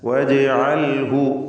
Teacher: ജീമിൻ്റെ സുക്കൂൻ ഖൽഖല സുഗ്റ നൽകി ശബ്ദം ഹറക്കത്ത് പോലെ ചലിപ്പിക്കണം